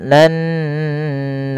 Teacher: ada bacaan ghunah yaitu dengan menahan suara nun dan memasukkan ke rongga hidung kita.